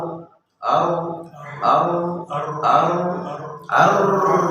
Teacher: বেশি কাঁপা যাবে না, বেশি তাকরার করা যাবে না, 2-3 বার তাকরার করতে হবে · বারবার হওয়া। যখন আমরা রা উচ্চারণ করব, রার মধ্যে সাকিন দিব, তখন জিহ্বার আগা কম্পন সৃষ্টি হয়।